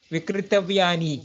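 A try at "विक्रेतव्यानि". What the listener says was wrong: Why are you making it ikaranta? It's already Vikreta. Why are you think plural will influence the...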